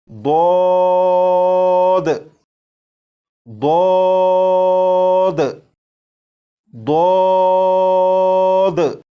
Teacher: Number 2، اس حرف کو جب آپ پڑھنا شروع کریں تو آواز کو موٹا کر لیجیے گا۔ جب آپ اس حرف کو پڑھنے سے پہلے زبان کی کروٹ کو اوپر کی داڑھوں کی جڑ سے لگا لیں گے، اس کے بعد آواز کو موٹا کر کے اس حرف کو پڑھیں گے تو یہ حرف بالکل درست پڑھا جائے گا، جیسے ضاد ضاد ضاد۔